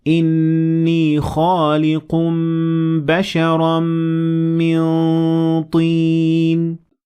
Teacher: میرا منہ ایسے ہے جیسے میں طا کہنے والا ہوں لیکن ہوا ناک سے گزر رہی ہوتی ہے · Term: اخفاء